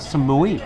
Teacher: So it's got that rising tone at the end. like a question.